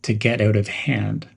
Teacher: Connect get out smoothly, as if one word.